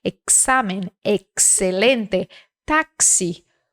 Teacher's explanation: Quando o X está no meio da palavra ou no final, ele tem esse som de KS.